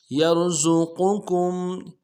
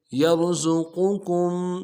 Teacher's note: یا کو را کے ساتھ ملانا ہے، را کو موٹا ادا کریں گے۔